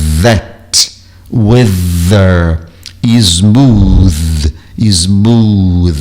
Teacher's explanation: A língua está na ponta do dente, como eu disse, como se você estivesse mordendo a língua e colocando a pontinha dela para além do dente, para fora, né, vibrando a corda vocal · com a língua na ponta dos dentes, é o TH, mas no caso do TH que vibra a corda vocal